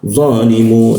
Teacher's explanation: Huruf za di belakang gigi, lidahnya dilengkungkan sehingga rongga udara agak tertutup dan aliran udara agak terhambat ya.